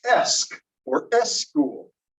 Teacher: this person oftentimes puts in an E in front of SK, SP, and ST